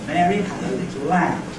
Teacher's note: I've chosen to put four rhythmic stresses in it. One at the beginning of Mary, one on had, one on lit, and one on lamb. · I've chosen to put 4 rhythmic stresses in it, one at the beginning of Mary, one on had, one on lit, and one on lamb. So if each foot begins with a rhythmic stress, we've got 4 feet, and I've marked them with this slanting line in the ordinary spelling version here, the orthographic version. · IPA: /ˈmeəri ˈhæd ə ˈlɪtl̩ ˈlæm/